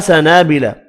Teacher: با ساکن پر قلقلہ کریں گے، الف مدہ کو اور یا مدہ کو ایک ایک الف کی مقدار میں کھینچ کر پڑھنا ہے۔